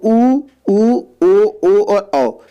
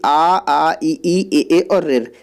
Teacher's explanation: तो आवृतमुखी वे होते हैं जिनमें मुंह का आकार गोल नहीं बनता है, जबकि व्रतमुखी वे होते हैं जिनमें मुंह वृत्त के समान गोल बन जाता है। तो ऊ ओ और औ ये क्या कहलाते हैं, व्रतमुखी कहलाते हैं, जबकि आ ई ए और रेर ये क्या है, अव्रतमुखी कहलाते हैं, क्योंकि इनमें मुंह सीधा रहता है, गोल नहीं बनता है।